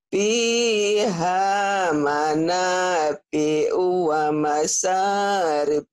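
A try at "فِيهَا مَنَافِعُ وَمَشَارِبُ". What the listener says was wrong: Iya, nanti shin-nya dilatih ya. Wa masya. Shin. wa masyarib.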